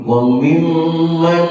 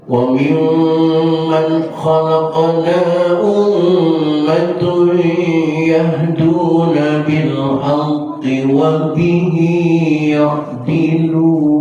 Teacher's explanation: nun mati ketemu kha, hukumnya idhar artinya jelaskan suaranya tanpa ditahan, jangan begini wa mimman, jangan, lepas saja.